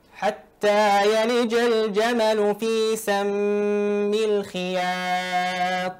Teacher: بالنسبة للترقيق في الألف التي بعد الياء هو أكيد أنه مطلوب، لكن لتنتبه ولتحذر أن يصل الترقيق إلى حد جزء من الإمالة أو التقليل